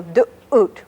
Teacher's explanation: But you have that little interruption in the middle, du'ut, which is made deep in your throat, and it's called a glottal stop because it's made in your glottis, down in your voice box, or larynx